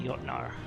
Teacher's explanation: the Scandinavians are definitely amongst the Europeans who pronounce a J with a Y sound